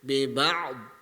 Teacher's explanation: Kita mesti kena tebalkan mulut kita tu bi ba'd. Seolah-olah kita nak sebut huruf dad selepas tu.